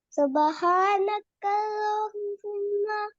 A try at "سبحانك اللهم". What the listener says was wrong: There is single ha, not double ha, okay? سبحانك اللهم بس.